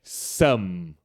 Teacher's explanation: a gente tem que lembrar de fechar os lábios para fazer esse som do M no final